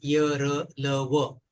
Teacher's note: उसके बाद जो है वो है संवार। संवार इसमें कंपन हो जाता है।